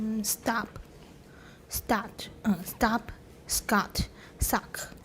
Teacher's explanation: in many accents of english syllable final ptk are accompanied by an overlapping glottal stop gesture